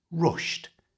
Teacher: There are a few different ways to pronounce words with an ed ending, and here it's with a t sound.